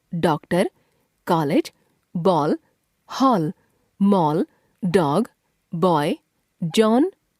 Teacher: इसका उच्चारण आ तथा औ के बीच का होता है। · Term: आगत स्वर